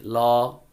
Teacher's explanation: তুমি ল ধ্বনিটা যখন তুমি উচ্চারণ করবে তখন দেখবে তোমার 2 দিক থেকে বাতাস বেরিয়ে যাচ্ছে। ল, এই জন্য 2 পাশ দিয়ে বাতাস বেরিয়ে যাওয়ার কারণে এটাকে বলা হয় পার্শ্বিক বর্ণ।